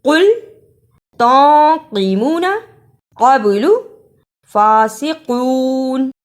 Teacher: سب میں قاف کو موٹا پڑھنا ہے، اسے کل نہیں پڑھنا، اس سے لفظ کا مطلب تبدیل ہو جائے گا۔ قاف پڑھیں قاف، پھر پڑھیں قاف، اب کہیں قل تنقمون قبل فاسقون۔